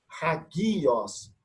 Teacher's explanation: é uma aspiração forte, chamada de espírito forte